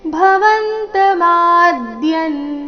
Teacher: ಭವಂತ ಮಾದ್ಯನ್ ಶಬ್ದದಲ್ಲಿ ಮ ಅಕ್ಷರ ಮಾತ್ರ ದೀರ್ಘ ಇದೆ ಮ ದೀರ್ಘ ಹೇಳಿ ಅದರ ಮೇಲೆ ಆಘಾತ ಬರಬೇಕು